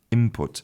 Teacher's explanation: So, we substitute We actually change the n of n for an m. And so, if you listen to native speakers, they say input as if the word was spelt i m p u t